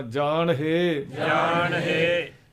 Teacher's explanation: ਜਾਣ ਸ਼ਬਦ ਇਕੱਠਾ ਬੋਲ ਕੇ ਹ ਨਾਲ ਜੋੜਨਾ